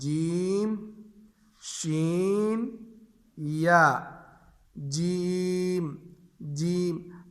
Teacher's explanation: زبان کا درمیان جب اوپر تالو کے درمیان سے لگے, اس سے 3 حرف ادا ہوتے ہیں